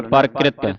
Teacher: ਇਥੇ ਪੈਰ ਵਿੱਚ ਰਾਰ ਜਲਦੀ ਦੇ ਨਾਲ ਪੜਿਆ ਜਾਵੇਗਾ